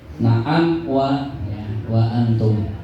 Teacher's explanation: jadi itu harus jelas bunyi m-nya tidak boleh ada bunyi mendengungnya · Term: idhar